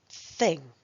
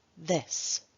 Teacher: the th as in thing is pronounced with more muscular tension and has a stronger puff of air than the th as in this